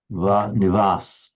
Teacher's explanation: So the lips, it's not as if the lower lip is against the upper teeth, like the English V. It's more like just a V. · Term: bilabial